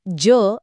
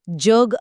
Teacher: तालव्य उच्चार करतो म्हणजे त्यात य मिसळतो आणि जीभ थोडी मागे टाळूला लावतो